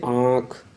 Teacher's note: आँख का उच्चारण करते हैं तो आपको हल्का साउंड नाक से भी सुनाई देगा और मुंह से भी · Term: अनुनासिक